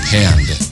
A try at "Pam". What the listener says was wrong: With an M. There's no D.